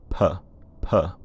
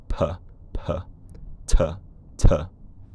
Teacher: You can hear that there's a few milliseconds of voiceless air before the voicing starts, which it sounds a bit like a puff of air. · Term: voiceless aspirated